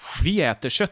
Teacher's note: object is stressed Viet you can hear that this is stressed the tone goes up and the volume goes up when we say this we kind of push that word into the foreground